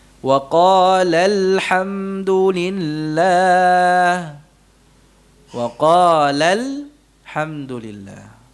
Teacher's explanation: Maka cara yang dilakukan dengan menggugurkan huruf pertamanya. Jadi pelafalan alifnya tidak dilafalkan lagi. Alifnya tidak ada lagi dalam pelafalannya, maka kita gugurkan alifnya.